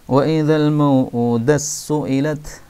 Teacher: taknya diidghamkan pada sin